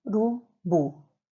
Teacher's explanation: a sílaba mais forte é a última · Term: sílaba tônica